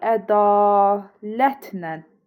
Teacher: Yəni a uzanır, lə də nənə çevrilir